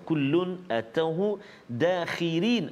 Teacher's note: Ra dekat situ pada kalimah dakhirin kita baca nipis, tarqiq. Kenapa? Sebab ra baris bawah.